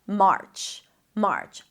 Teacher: Make sure you don't bring the tongue up for the R too quickly, because then it's going to sound like merch, which is a different word.